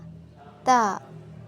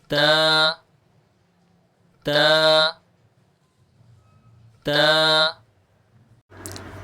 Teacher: تا میں کے پڑھنے میں زبان کو اوپر والے جو دانت ہیں ان کے پیچھے جو مسوڑے ہیں ان کے ساتھ لگا کر پڑھا جائے گا